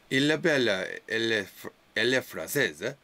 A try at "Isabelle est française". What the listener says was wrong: you sound Italian now. Here it will be Isabelle est française. Isabelle est française.